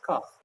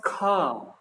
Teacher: अब जैसे अपन लोग बोलते हैं का, तो नॉर्मली का, तो इसमें कम वायु लग रही, तो का किस में आ जाएगा, अल्प प्राण में